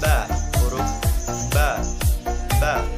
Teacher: dua perut bibir sebelah dalam. Sifatnya nafas ditahan atau jahr, kemudian suara tertahan atau syiddah, lidah di bawah istifal, terbuka antara lidah dan langit-langit atas infitah, keluarnya lancar atau ringan idlaq, memantulkan suara tambahan atau qalqalah.